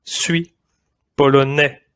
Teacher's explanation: We don't say the S at the end